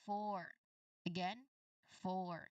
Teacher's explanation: So no vibrations at all if you try to say it while touching your neck. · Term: F sound